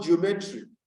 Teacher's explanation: now we realize that the second syllable is stressed